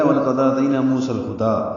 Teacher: تی یا لین ہے، یہ 1.5 حرکت لمبا ہوتا ہے